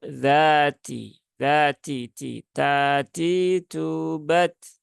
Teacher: huruf ta dia ada sifat hamsnya maka ya tunaikan hamsnya ya tapi tidak perlu sampai berlebihan